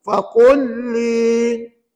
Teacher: Dan kita baca, masukkan huruf lam yang mati ke dalam lam bersabdu dan dibaca tanpa dengung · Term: idgham mutamatsilain